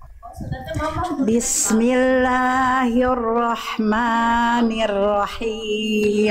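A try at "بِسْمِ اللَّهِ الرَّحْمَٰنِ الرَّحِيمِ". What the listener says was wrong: tapi jangan jadi kepanjangan Maknya dua harakat Bunda diulang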